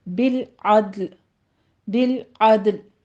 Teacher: عین کو وسط حلق سے ادا کرتے ہوئے آگے دال کے اوپر قلقلہ کریں گے